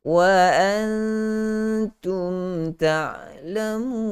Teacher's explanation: bunyi gunnah itu, bunyi nun itu disembunyikan ke dalam huruf ta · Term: ikhfa